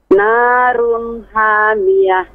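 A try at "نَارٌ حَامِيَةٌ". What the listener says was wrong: Masih ha. Lebih ditekan ya ke tengah tenggorokan. Ha. Ha. Ada ha yang di tengah tenggorokan, benar-benar ditekan sih. lebih tajam, lebih terasa.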